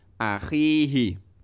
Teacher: Kho ya, kho dikasroh khi. Akhihi, karena ada ya mati berarti khi-nya itu panjang.